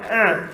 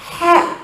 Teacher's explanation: Hamzah dengan ha tempatnya sama makhrajnya harful hawa. Cuman sifatnya beda. Makanya ketika keluar bunyinya beda.